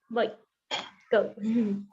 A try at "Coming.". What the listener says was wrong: Coming. Instead of boy, coming.